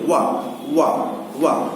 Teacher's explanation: वा का उच्चारण स्थान दांत और ओठ है। आप करके भी दे सकते हैं, कहें अगर वा तो देखिए वा, यानी कि इस तरह का वा अगर कहते हैं तो दांत और ओठ का मिलन होता है, और ओठ जो है वर्तुलाकार हो जाता है, कुछ गोल होता है कि नहीं होता, वा ऐसे तो वा। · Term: दंतोष्ठ